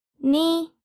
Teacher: 呢 is the first tone. It's high flat tone, the highest.